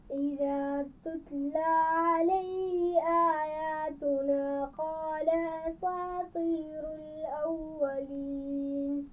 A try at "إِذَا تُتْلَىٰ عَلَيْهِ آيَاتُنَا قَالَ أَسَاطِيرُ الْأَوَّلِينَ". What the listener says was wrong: اساطیر، سین کی آواز موٹی نہیں ہوگی، دوبارہ پڑھیے.